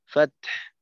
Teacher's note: শেষে ওয়াকফের সময় ফাতহু না বলে ফাত ফাত, তায়ের উচ্চারণ শেষে হায়ের মাখরাজ থেকে একটু বাতাস বের করতে হবে